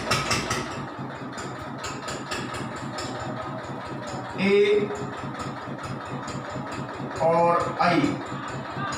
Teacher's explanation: पांचवा है ए और आई, इनको हम कंठ तालव्य के नाम से जानते हैं। इनका जो उच्चारण स्थान है वो कंठ और तालु होता है।